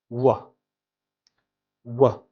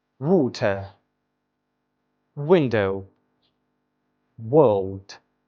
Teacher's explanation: w is a bilabial approximate which is also known as a semi-vowel sound